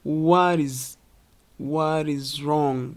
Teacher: The T in what can become a soft D sound in American accent. Flap T. So it sounds like what is just like this.